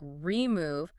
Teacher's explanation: Now you could reduce it to a schwah like remove. But if you choose to pronounce the e fully like remove, listen to how quick and light that e is